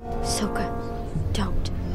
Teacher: The first vowel in his name was randomly changed from a short O to a long one.